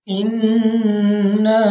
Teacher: अब यहाँ पे हमारे पास सबसे पहले है नून मुशद्दद। तो हमने इसमें गुन्ना करके पढ़ना है और गुन्ना की मिकदार 2 सेकंड तक की है